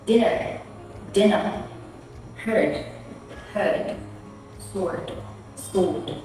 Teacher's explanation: As you notice, the R can be barely heard in every British pronunciations.